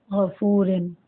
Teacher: پھر آگے ہے من غفورن، اس میں فا واو پیش فو، ٹھیک ہے نا؟ یہاں فا کے ساتھ فا کے اوپر پیش ہے اور اس کے بعد واو آ رہا ہے، تو اس کو کھینچ کے پڑھیں گے